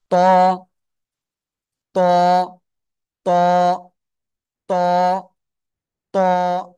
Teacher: জিব্বার আগা, এই যে বড় দুটো দাঁত দেখেন দেখেন, এই যে এই 2 দাঁতের গোড়ায় লাগান। জিব্বার আগা লাগিয়ে মোটা আওয়াজে পড়তে হবে।